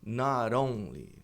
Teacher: Se a gente for fazer a conexão, fica not only, porque a gente tem o T ladeado por vogais.